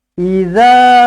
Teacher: dibaca dengan panjang sebab ada huruf mad ada Alif di situ baca dengan dua harakat mad asli